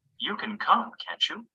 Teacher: we use Rising intonation with Tag questions to ask a real question to check information